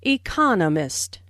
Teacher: the stress on the second syllable, economist.